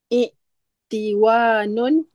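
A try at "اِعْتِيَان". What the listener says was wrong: I, Iktianun, wawunya ditukar menjadi ya. Iktianun dan masdar mimi.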